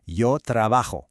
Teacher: In Spanish, the letter J has a strong breathy H sound, almost like a little scrape at the back of your throat.